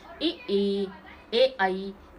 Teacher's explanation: मुंह के आगे वाले, जीभ के आगे भाग से बोलते हैं, ए आई, तो ये क्या हो गए, अग्रस्वर हो गए।